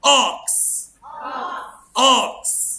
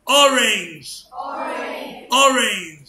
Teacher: الاو صوتها اه اه، صوتها ايه؟ اه. يبقى بفتحها شويه كده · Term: short O